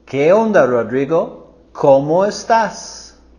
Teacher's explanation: So here we're going higher with our voice and intonation with ¿qué onda, and ¿cómo?